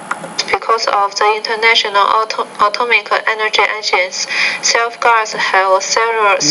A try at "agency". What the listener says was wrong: You want to say agency, not agents. So you're leaving out that last syllable.